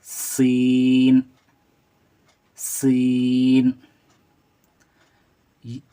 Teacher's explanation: ये सीटी की आवाज़ निकलती है।